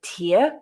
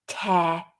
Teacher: a tear with that ear diphthong but to rip a piece of paper spelled the same t-e-a-r tear with the air diphthong